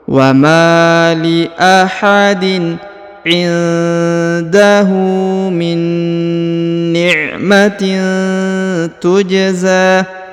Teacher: Huruf ja dipantulkan atau dikolkolahkan karena berharokat sukun ya